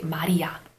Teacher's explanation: But it's not the English L in the sense that the tip of your tongue touches the alveolar ridge instead of your teeth. When the liud comes between two vowels, it's romanized as an R, but it's actually an alveolar flap, which is the same sound you get in words like butter or rider.